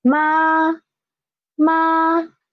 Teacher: so it is a level flat sound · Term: first tone